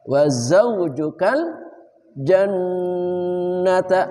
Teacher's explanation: nun batasyid wajib dibaca guna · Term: nun musyaddadah